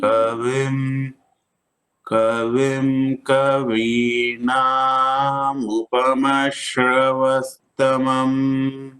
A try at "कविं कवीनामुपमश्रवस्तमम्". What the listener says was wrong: Now you are saying Dirgha Swaritana. It is just Dirgha na, not Dirgha Swaritana. Kavina Mopama Shravastamam.